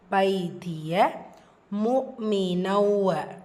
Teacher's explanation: தன்மீனுக்கு அப்புறமா வாவ் இதுதான் பில்குன்னா இணைச்சி குன்னா செஞ்சு ஓதணும்